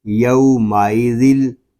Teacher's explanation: یہاں تنوین کے بعد حروف یر معلون میں سے لام آ گیا ہے، یہاں پر ادغام یر معلون ہوگا بلا غنہ